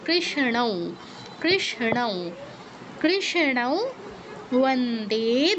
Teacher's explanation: হবে ও হ্যাঁ, ও হবে উ এর মতো, বন্দে উ এর মতো সাউন্ড হবে, উ এর মতো সাউন্ড হবে, কারণ পরেরটা ও, ব নয় ও। পরে যদি ও থাকে অনুসারের জায়গায় উ এর মতো সাউন্ড হয়।